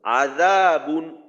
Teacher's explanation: এক আলিফ টানতে হবে মধ্যে তবাই আজা বা দুই পেশ বুন স্পষ্ট করে পড়বো গুন্না ছাড়া কারণ তানভীনের পরে হামজা আসছে